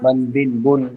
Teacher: তানবিনটা হচ্ছে কি তানবিন, দুই পেশ দিলে তানবিন, তানবিনের শেষে একটা নুন উচ্চারণ হয়, ঠিক আছে, নুন সাকিন উচ্চারণ হয়